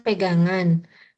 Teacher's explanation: Contoh yang pertama memiliki morfem dasar berfonem akhir eng dan mendapatkan sufiks an, sehingga fonem akhir eng mengalami pergeseran ke silabel berikutnya, yaitu sufiks an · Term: pergeseran fonem